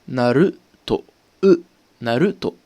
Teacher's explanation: il va se prononcer entre le OU, comme dans le mot mou par exemple, et le E. Ça va donner une sorte de E.